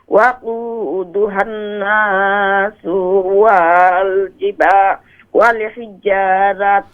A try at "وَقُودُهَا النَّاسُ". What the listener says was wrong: وقودها الناس نون میں غنہ کریں. یہ والحجارہ پہ جو آپ وقف کرتے ہیں تو اس کو لمبا نہ کریں.